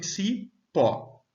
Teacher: O pó é a sílaba tônica da palavra.